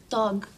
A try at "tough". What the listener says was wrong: Thug? Oh, remember I told you the G-H sometimes sounds like an F. It's tough, like rough or laugh.